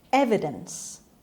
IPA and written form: ˈevɪdəns (evidence)